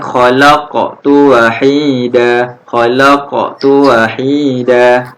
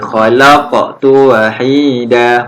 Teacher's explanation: Kita kena lantunkan dekat huruf qaf yang bertanda mati.